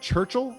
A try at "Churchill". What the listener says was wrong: You kind of hit the L.